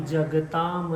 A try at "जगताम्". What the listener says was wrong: फिर से बोलिए इस अक्षर को ही। म आप पूरा बोल रहे हैं। जगताम हाँ।